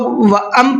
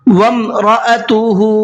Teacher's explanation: حمزہ کو الگ کر کے پڑھنا ہے، اس کا ساؤنڈ الگ رہے گا حمزہ کا۔ وَامْرَأَتُهُ، اور ہا کو کھینچ کر کے پڑھنا ہے۔